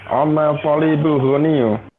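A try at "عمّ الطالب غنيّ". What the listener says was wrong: Ya, kurang tepat ya, bukan amma. Itu amma itu di surat An-Naba. Ya, itu beda ya sama ini. Di sini namanya ammu. Amut tolibi goniyun ya. Amun ya. Jadi kalau tidak ada mudhof dan mudhof ilaih ya, namanya amun ya, ada tanwinnya. Amun.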